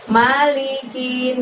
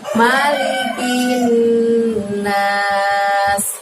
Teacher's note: Kinnya dimasukkan kepada nun tasydid bacaan gunahnya itu. Malikin gitu, ditahan sebanyak 2 harokat.